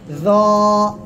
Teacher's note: এক আলিফ টান হবে আর মোটা আওয়াজ হবে, মোটা আওয়াজ।